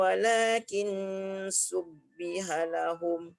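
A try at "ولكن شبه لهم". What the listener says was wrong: Lagi shin lagi. Walakin syubbiha lahum. Syubbiha.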